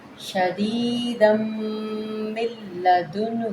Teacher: تنوین کو ہم میم مشدد کے ساتھ ملائیں گے، اس میم مشدد کو ہم نے لام کے ساتھ ملانا ہے، نون سائلنٹ ہو جائے گا